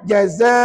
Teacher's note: Bila kita wakaf kata ulama, kamu kena jadikan dia dua harakat mad iwad.